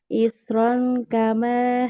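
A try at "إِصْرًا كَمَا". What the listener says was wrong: Nah, ini huruf shotnya tebal. Isrong. Coba, Kak.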